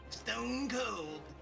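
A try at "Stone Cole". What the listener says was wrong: No, not cold. Cole. No D.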